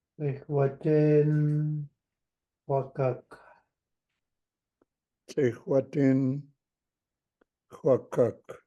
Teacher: Rounded X sounds like K rounded with W.